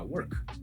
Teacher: Para eu fazer o som de K, eu não preciso usar a minha voz. Por isso que a gente chama em inglês, ó, de unvoiced consonant, que são consoantes que não tm a voz.